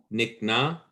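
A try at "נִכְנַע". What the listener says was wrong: Yeah, so make sure to pronounce the kaf is kha, nichna.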